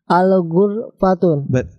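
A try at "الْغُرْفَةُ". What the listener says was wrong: Al-ghurfatu, ya, ada alif lamnya, ingat? Kalau ada alif lamnya maka nanti tanwinnya akan dihilangkan. Al-ghurfatu.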